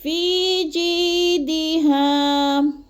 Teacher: فی کو تھوڑا سا کھینچنا ہے کیونکہ ادھر یا مدہ ہے. الف یا ساکن سے پہلے فا کے نیچے زیر ہے، تو ادھر یا مدہ 1 سے 2 الف کے برابر اس کو لمبا کر کے پڑھنا ہے.